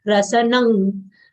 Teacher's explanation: Anuswar sound is half nasal consonant of guttural varga, nga.